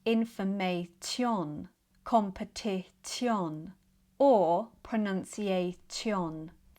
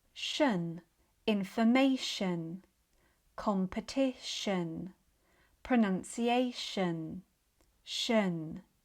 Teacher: Such as in words that end in t i o n, shun. So, the t becomes sh, and the vowel becomes the schwa, which is more of an uh sound. So, put it all together and we get shun. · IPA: /ʃən/